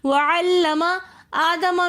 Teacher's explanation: وعلم آدم میں حمزہ کے اوپر کھڑا زبر ہے تو اس لیے ہم نے حمزہ کو تھوڑا سا کھینچ کر پڑھا